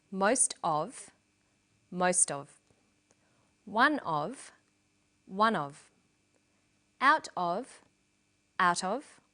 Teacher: Notice that of in these phrases is unstressed.